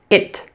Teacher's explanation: the short I is a relaxed vowel relax your mouth and your tongue as you say it it doesn't take much effort at all to pronounce this sound